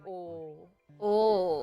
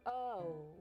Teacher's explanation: in a general American accent or other accents in the United States, the O is a diphthong. It has 2 sounds. So it goes, oh.